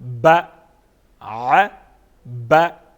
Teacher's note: کیونکہ با حروف قلقلہ میں سے ہیں تو اس کی آواز میں جنبش پیدا کریں گے اور اس کو وضاحت کے ساتھ پڑھیں گے